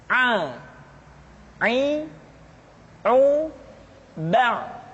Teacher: pengucapan huruf a dikeluarkan dari tengah-tengah tenggorokan seperti kita mengucapkan huruf ha Aa i u ba' kesalahan sering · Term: huruf Ain